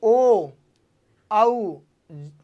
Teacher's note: कंठ में आपके वाइब्रेट हो रही है, इसका मतलब ओ और आऊ कौन सा भाग होगा? जीवा का पश्च भाग।